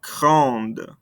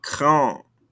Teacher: Adding this E makes us pronounce those ending consonants.